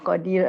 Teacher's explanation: Nipisnya sebab sebelumnya ada huruf ya, ya mat. Dia kalau ada ya mat atau ya lin, ra yang di hujung tu kena nipis